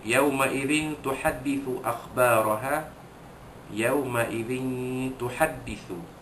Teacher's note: menyembunyikan bunyi tanwin yang bertemu dengan huruf ta